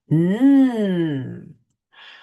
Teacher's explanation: To make the N sound, you see that? Your tongue should be against the ridge just behind your upper front teeth. Then push a little air through your nose, but keeping your mouth open.